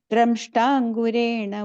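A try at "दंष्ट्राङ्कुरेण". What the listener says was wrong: The fourth line, first word, Damstrangkuren. I think you said dra. It's a da. That the ra sound comes in the ta. Damstrangkuren. Second time when you said dra.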